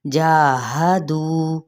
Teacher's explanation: ہا کو اقصائے حلق سے ادا کرنا ہے، لیکن اس کو بڑھانا نہیں، یعنی لمبا نہیں کرنا، دو کو لمبا کریں گے کیونکہ واو مدہ کا قاعدہ ہو رہا ہے۔